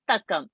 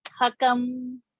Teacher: Tha mahaprana, ka alpa prana.